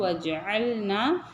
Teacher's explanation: ஐன் வந்து கரெக்டா நடுத்தொண்டையில இருந்து சொல்லணும்